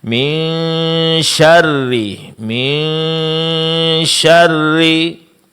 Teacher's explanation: Cara mendengungnya di sini adalah dengungkan huruf nun sukun dan samarkan bunyi nun sukunnya. Tahan suara kemudian arahkan suara ke makhraj huruf setelahnya. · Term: ikhfa